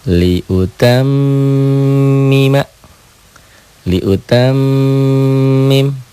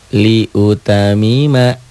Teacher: Nggak ada yang ditahan, nggak ada yang didobel, nggak ada yang dengung. Liutamima. Nih, sidahnya balikin kembali.